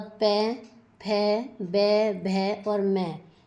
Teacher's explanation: आगे है ओष्ठ या वर्णा यानी जो होठ से बोले जाते हैं।